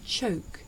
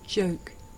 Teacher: the voiceless sound that you hear at the beginning of the word choke and the voiced sound that you hear at the beginning of the word joke